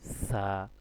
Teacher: জিহ্বার আগাটা সামনের দাঁতের আগার মধ্যে লাগবে সা। আপনার জিহ্বার আগাটা সামনের দুই দাঁতের আগার মধ্যে লাগাইবেন, লাগাই উচ্চারণ করবেন সা, হালকা করে বাতাস বের হবে।